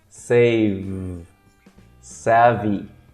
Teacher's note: o som do V. Eu consigo segurar até ficar sem ar.